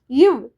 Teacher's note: இவ்ன்னு சொல்லும்போது மேல்வாய் பல்லும் கீழ் உதடும் ஒட்டிக்கொள்ளும்